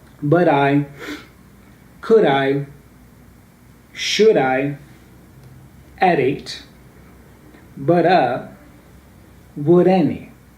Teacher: instead of saying but I, you make the T sound there as a ra ra sound, okay? So you say but I, okay? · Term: Portuguese R